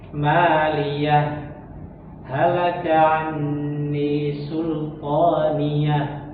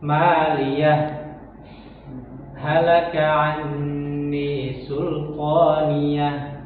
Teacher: Kalau yang Al-Haqqah itu ketika kita baca wasol, ya, baca wasol itu boleh dengan dua cara. Artinya boleh dengan sakta, boleh juga dengan idgham. Jadi diidghamkan ke huruf H selanjutnya.